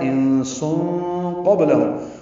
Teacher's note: سین صفیر کی آواز سے ادا ہوگا، تنوین کے بعد قاف آنے کی وجہ سے اخفا ہے